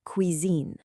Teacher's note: try to nail that soft Z sound right in the middle